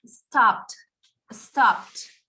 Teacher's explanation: The E doesn't sound, but the D at the end doesn't sound like D. It sounds like T.